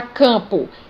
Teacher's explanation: ele me mostra que a vogal anterior é uma vogal nasal